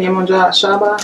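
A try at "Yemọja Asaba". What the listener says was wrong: A at the beginning, S-A-B-A. It's not S-H-A.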